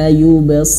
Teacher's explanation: Di antara huruf yang paling tebal yaitu huruf shad. Huruf shad ini meskipun dia kasrah dia harus tebal.